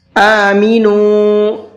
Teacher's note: یہاں پر نون کو کھینچ کر کے پڑھنا ہے، واو مدہ کا قاعدہ ہے